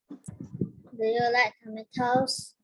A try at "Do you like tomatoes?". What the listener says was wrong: Yeah, I think you can go even more, put even more intonation in. Do you like tomatoes? Take it higher at the end.